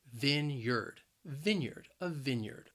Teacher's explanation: The word has two syllables, and the stress is on that first syllable. And that first syllable can be a little challenging because you have that short I sound, vineyard. Vineyard, a vineyard.